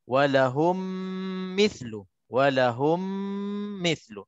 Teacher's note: Mim mati bertemu dengan mim, terus kita masukkan sebabnya idgham. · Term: idgham mithlain saghir